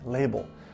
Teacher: the first l will have you touching the back of your top teeth where the second l the final l almost sounds like a